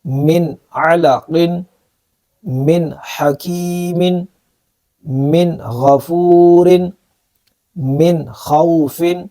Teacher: یہ وہ کلمات تھے جن کے اندر ہم نے نون ساکن کو ظاہر کر کے پڑھنا تھا، اظہار کا قاعدہ